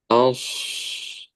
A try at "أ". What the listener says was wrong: A-nya tipiskan dulu.